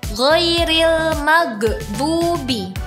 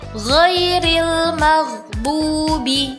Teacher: huruf ghain sukunnya jangan dibaca memantul ya karena bukan termasuk huruf qalqalah